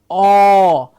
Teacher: the lips come forward mouth opens to say oh